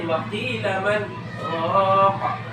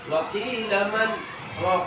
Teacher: Itu namanya sakta, berhenti sejenak tapi tidak bernapas, tidak boleh bernapas. Waqila man raqa, ditahan nafas, jangan mengambil kesempatan bernapas, enggak, cuma sekedar aja.